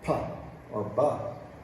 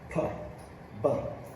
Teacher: if it's a sound like putt or but it's completely stopped and then released